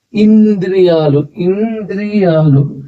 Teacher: ఇది ఇన్ అనే శబ్దం వస్తుంది ఎందుకంటే ద ముందు ఉంది కాబట్టి ఇంద్రియాలు ఇంద్రియాలు ఈ దీన్ని చదివేటప్పుడు ఇలా చదవాలి ద కి దాపల సున్నా